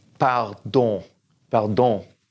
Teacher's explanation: Don't say the N at the end.